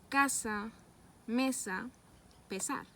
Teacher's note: la lengua se acerca a los alveolos dejando una pequeña abertura por donde escapa el aire las cuerdas vocales no vibran